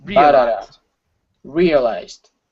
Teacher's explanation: you have a strong stress and a weak stress the strong stress is at the very beginning the weak stress is at the end